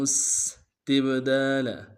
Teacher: وَإِنْ أَرَدْتُمُ اسْتِبْدَالَ، تا کو با کے سامنے لانا ہے، با ساکن با حرف قلقلہ میں سے قلقلہ کریں گے